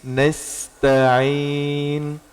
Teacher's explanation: sifat dari sin itu hamas, mengeluarkan desis.